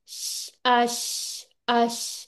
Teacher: और शीन में मुझे ऐसे फील हुआ आपके होंठ आगे आए हैं। ठीक है, तो शीन में होंठ आगे नहीं आने